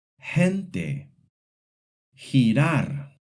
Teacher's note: The soft G sounds like a strong English H before the E and the I.